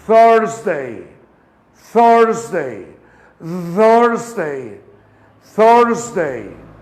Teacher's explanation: Yo saco la lengua entre los dientes, bajo las mandíbulas, ligeramente muerdo mi lengua, suavecito, y soplo. Y digo, ese sonido viene siendo la TH. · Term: sonido de la TH